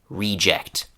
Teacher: So in this noun, the stress is on the first part of the word.